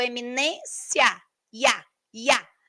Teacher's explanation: nós vamos ter uma semivogal e uma vogal na mesma sílaba. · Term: ditongo